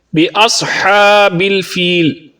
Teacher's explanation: صاد کو پر پڑھیں گے کیونکہ یہ حروف مستعلیہ میں سے ہے